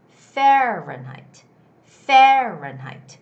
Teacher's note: the word fahrenheit the stress goes on the first syllable okay so and there are three syllables fe ren height if